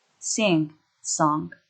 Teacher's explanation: In written English, this sound is normally spelled as the two letters N and G, like at the end of sing, song. Ng is produced when the velum can be lowered to allow air to flow through nasal cavity.